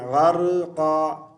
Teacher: را پر ہم نے قلقلہ نہیں کرنا